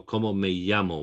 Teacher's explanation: that's the double l essentially pronounced as a y